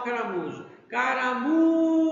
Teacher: se falamos caramujo né a parte mais forte é o mu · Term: sílaba tônica